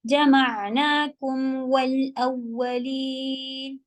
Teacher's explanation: سے چھوٹا ہوگا جمعناكم والأولين اور گول کر کے جمعناكم والأولين اولین میں نبر ہوگا کس کے ڈر کی وجہ سے کہ کہیں وہ شدہ کے بجائے صرف لین نہ سنائی دے جبکہ وہ مشدد ہے